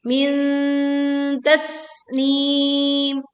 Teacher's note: Tasnim, ada sin sukun, tekan dan alirkan anginnya, kemudian berwakaf dengan panjang 2, 4 atau 6 harokat.